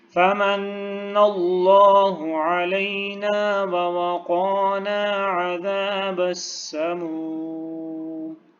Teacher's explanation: فمن اللہ، نون کی تشدید ہے اور یہاں پہ غنہ بھی کرنا ہے